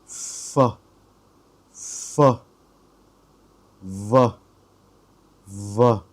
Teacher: So with this column, we use our upper teeth connect to our lower lips